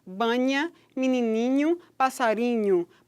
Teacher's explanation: produzindo esse nha, esse som palatal bem audível